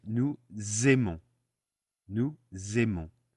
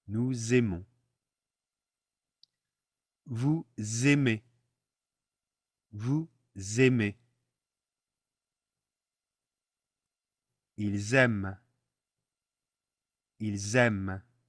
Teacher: We turn the S of nous into a Z, and we pronounce it nous aimons. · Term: liaison